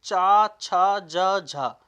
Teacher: चा, छा, जा, झा ये आपके स्पर्श संघर्षी में भी आते हैं